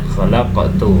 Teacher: Cara membacanya yaitu dengan memantulkan, tidak terlalu kuat. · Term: qalqalah sughra